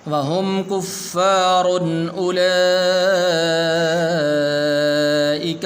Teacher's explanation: یہاں پر تنوین ہے لیکن یہاں پر غنہ نہیں کریں گے، اس لیے کہ آگے حمزہ حروف حلقی میں سے ہے